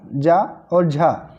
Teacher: ये स्पर्श संघर्षी वर्ण होते हैं